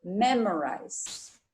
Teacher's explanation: accent shifts to the syllable before shim so we have memorized the stress is on the first syllable · The stress is on the first syllable, memorize. Okay, and like I said, the I is pronounced like a long I. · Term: stress syllable